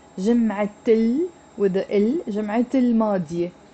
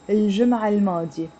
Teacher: The difference would be with the first one, you're saying جمعة الماضية. You're pronouncing the T مربوطة.